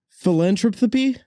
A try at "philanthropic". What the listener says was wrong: Close. Philanthropic. You were trying to say philanthropy.